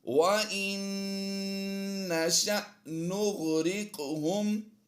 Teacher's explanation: قاف کی ادائیگی پر بھی کرنی ہے اور یہاں پر ہم نے قلقلہ بھی کرنا ہے